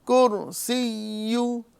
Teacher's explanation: کرسیو یعنی جیم والی آواز نہیں نکالنا ہے بلکہ یا کو مشدد طریقے سے اچھے طریقے سے پڑھنا ہے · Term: یا مشدد